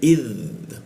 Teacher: huruf dza ujung lidah digigit